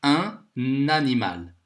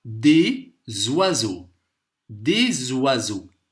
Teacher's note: ici on a fait la liaison parce qu on a une voyelle